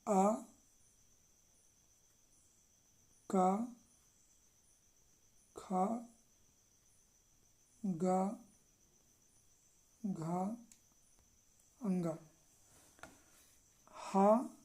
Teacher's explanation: इनका उच्चारण स्थान कंठ है, मतलब ये वर्ण कंठ से बोले जाते हैं।